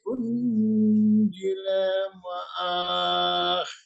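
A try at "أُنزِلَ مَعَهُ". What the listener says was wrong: Unzila ma'ah. Tidak boleh ada mat di situ. Kalau disukunkan, kecuali diwasolkan.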